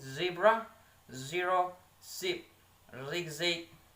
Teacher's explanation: a voiced alveolar fricative sound for Z